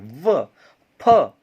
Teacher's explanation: दंतोष्ठ का मतलब दांत और होठ के माध्यम से बोले जाने वाले